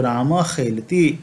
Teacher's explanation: विसर्ग का उच्चारण निश्वास के समान हो जाता है और क और ख का हल्का उच्चारण हो जाता है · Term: जिह्वा मूल्य